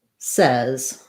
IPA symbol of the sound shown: ɛ